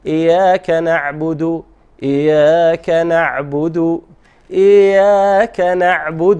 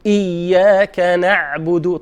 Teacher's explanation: ينبغي أن يحترس من أن لا يأتي بالشدة أو أن يأتي بها خفيفة. Sometimes people say إياك very light, so it should be proper and then right amount of shadda.